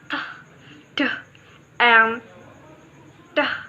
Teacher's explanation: the tongue tip touches the alveolar ridge and cuts off the airflow at the point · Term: stop consonant